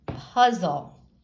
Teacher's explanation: reading the constant le part of this word we know that it's going to sound like there's a schwa a sound in between